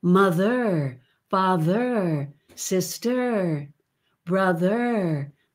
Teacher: with an r that you can hear as a tip coming back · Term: standard american